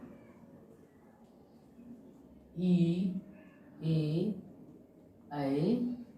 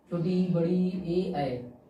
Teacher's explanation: अग्र स्वर में अगर ये हम बोलते हैं ना जीभ, तो ये जीभ के आगे वाले भाग से निकलते हैं